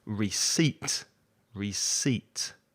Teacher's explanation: has two syllables and the stress is on the second syllable